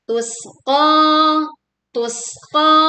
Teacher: Kita menekan huruf sin dengan mengalirkan suara dan anginnya. Qa dibaca panjang 2 harokat.